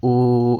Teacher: तो ओ या औ का उच्चारण स्थान कंठ से होता है।